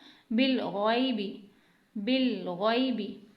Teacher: बा के बाद लाम साकिन आ रहा है यानी लाम पर जज़म है तो इसलिए उससे पहले वाले रूप से मिलाकर पढ़ेंगे, बिल गैन या ज़बर गै, गैन या ज़बर गै, बिल गै। गैन को मोटा पढ़ना है, हुरूफ मुस्तालिया यानी मोटा पढ़ा जाने वाला हुरूफ है तो इसलिए यहाँ पर इस बात का ख्याल रखना है, बिल गैबी नहीं पढ़ना, बिल गैबी, बिल गैबी।